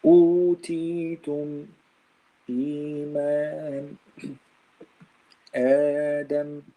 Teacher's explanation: Yani if we have hamza, but the hamza here is not after the mad letter, it's before the mad letter. Hamza before the mad letter. This is also mad far'i. But it takes only 2 beats. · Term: al-badal